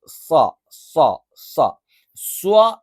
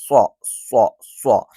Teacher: സ്വ എന്നുള്ളത് നാവിന്റെ കൂർത്താറ്റം ഒന്ന് പരത്തി വെച്ചിട്ടൊക്കെയാണ് നമ്മൾ ഉച്ചരിക്കുക